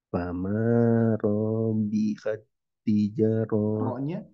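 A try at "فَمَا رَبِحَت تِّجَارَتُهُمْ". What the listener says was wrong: Ro-nya masih kepanjangan. Fama rabihat. Nah, ro-nya masih ya. Tijaratuhum. Aja ro tu ke tu cepat. Rotuhum. Ja-nya panjang. Siap, ma panjang, ja panjang. Nah, terus huruf ro-nya hati-hati. Fama robi langsung.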